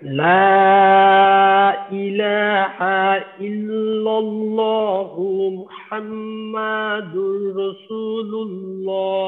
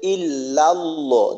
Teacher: ইল্লার যে লামটা এইটা একটু মোটা হয়ে গেছে